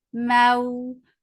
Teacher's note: makhraj of waw circling your lips, and this waw is light. This waw is lean.